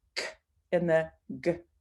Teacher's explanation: that your tongue is lifting in the back of your throat the back of my tongue is lifting and it's stopping the airflow